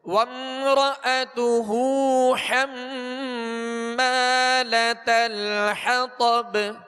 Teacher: اور حمالۃ الحطب، طا کو پر پڑھیں گے اور آگے با پر قلقلہ کریں گے، یعنی آواز میں جنبش ہوگی. آواز لوٹتی ہوئی محسوس ہو · میم نون جب بھی مشدد ہوں، جب ان پر شد آ جائے، شد تشدید جو کہتے ہیں 3 دندان والی شکل کو کہتے ہیں، تو حم اس کے اوپر شد ہے، اس میں غنہ کریں گے. اور حمالۃ الحطب، طا کو پر پڑھیں گے اور آگے با پر قلقلہ کریں گے، یعنی آواز میں جنبش ہوگی.